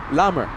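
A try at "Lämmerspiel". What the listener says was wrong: Not a hard A. Because it has an umlaut over the A. U. Lummer.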